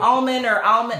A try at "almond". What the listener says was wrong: But it's actually almond. You're not supposed to say the L. It's actually silent. Don't say it with the L.